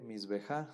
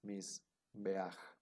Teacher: La palabra misbeaj, aquí si se fijan, este pataj es furtivo porque está un poquito desplazado a la derecha. Entonces la palabra no se lee misbeja, sino que ahora por ser pataj furtivo es misbeaj